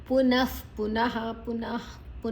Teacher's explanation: ನಮ್ಮ ಹಲ್ಲಿನ ಮಧ್ಯದಲ್ಲಿ ಗಾಳಿ ಹೊರಗೆ ಹೋಗುವಂತ ಶಬ್ದ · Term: ವಿಸರ್ಗ ಉಚ್ಚಾರಣೆ, ವಿಸರ್ಗದ ಉಚ್ಚಾರಣೆ